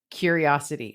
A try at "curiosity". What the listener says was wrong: You put the wrong emphasis on the wrong syllable.